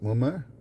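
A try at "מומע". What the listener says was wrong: Mumme with an I in at the end. Not mummer, but a mumme.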